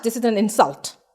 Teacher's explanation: this is an insult i stressed on in